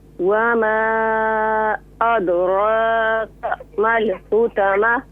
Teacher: را کو ذرا فل ماؤتھ کیجئے، موٹا کر کے پڑھیے